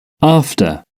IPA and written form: ˈɑːftə (after)